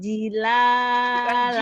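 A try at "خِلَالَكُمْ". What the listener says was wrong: Titiknya di atas apa di bawah? Khi. Bukan ji. Khi.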